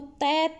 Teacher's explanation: तैत है, ये आवाज़ कहाँ से आ रही है? दांत पे टच हो रही है ना जीभ, तो ये दंत्य हो गए।